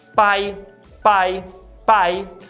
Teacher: em português Nossa não aspiramos o p Ou seja a gente não manda esse arzinho junto com fonema